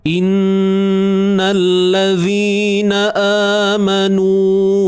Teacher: nun bersabdu ni kita kena dengungkan dia kadar 2 harakat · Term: Wajibul gunnah